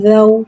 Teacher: اور جب ہم زو پڑھیں گے تو ہوٹوں کی گلائی کے ساتھ ادا کر کے پڑھیں گے زو۔ زال کو ایک الف یعنی 3 حرکات کے برابر کھینچے پڑھیں گے۔